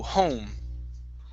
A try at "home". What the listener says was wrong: So you're saying home. Instead of aum, go to an O first. Home. So you're going home. So you're actually pronouncing 3 vowel sounds in one. So instead of starting off with an ah, okay, start with an o. Home.